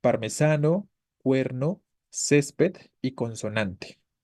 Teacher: la cuestión con las palabras graves o Llanas Es que la sílaba tónica es la penúltima no al momento de hacer la división silábica será la penúltima · Todas ellas tienen su sílaba tónica en la penúltima